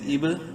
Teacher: قلقلہ کریں گے با میں ساکن ہونے کی وجہ سے